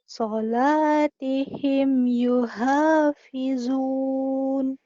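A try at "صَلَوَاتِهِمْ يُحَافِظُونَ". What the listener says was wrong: Solawah ya, bukan sholat. Di sini ada wa-nya. Di ayat lain iya. Di sini solawatihim yuhafizun.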